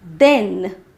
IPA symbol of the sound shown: ɛ